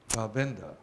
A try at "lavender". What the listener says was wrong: Lavender. Not lavender, lavender. But the accent goes on the first syllable, lavender. It's L, lavender.